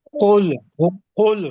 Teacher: یہ قاف موٹا ہے، لام بریک ہے،